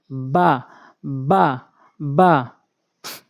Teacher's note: দুই ঠোঁট ভেজা অংশ মিলিয়ে উচ্চারণ করবেন